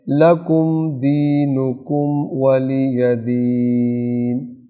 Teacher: دینکم کی جو میم ہے اس پر کوئی طول نہیں ہے، نہ کوئی غنہ ہے، صرف میم کو ساکن پڑھنا ہے